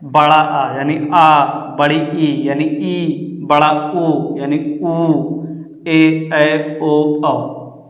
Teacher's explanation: इनके उच्चारण में ह्रस्व स्वर से 2 गुना टाइम लगता है। अगर उसमें 1 सेकेंड लग रहा है या अगर उसको बोलने में अगर जैसे 2 सेकेंड लग रहा है तो इसको बोलने में 4 सेकेंड लगेगा। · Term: दीर्घ स्वर